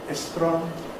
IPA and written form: estrɒn (strong)